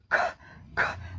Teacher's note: जीभ का पिछला भाग हवा को रोक देती है और स्टॉप एयर हवा रुक जाती है · हवा का झोंका का पूरा-पूरा अनुभव होता है। हमारे गले में जो स्वर तंत्र है यहां स्वर तंत्र में कंपन नहीं होता है।